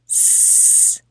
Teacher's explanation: Say s with your hand on your throat. See, no vibration.